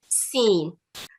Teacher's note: سین سیٹی کی آواز ہے جو کہ سامنے والے دونوں دانتوں کو ملا کے ادا کی جاتی ہے